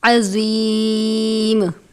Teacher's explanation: عظیم میں عین کو باریک پڑھتے ہیں، زوا کو پر پڑھیں گے، عظیم نہیں پڑھنا، یعنی ایسا نہیں کرنا کہ آپ عظیم پڑھیں تو زال یا زا کی آواز ظاہر ہو، آپ نے زوا کی آواز کو ظاہر کرنا ہے، یعنی زوا کو پر کر کے پڑھیں گے تب ایسی آواز آئے گی، عظیم۔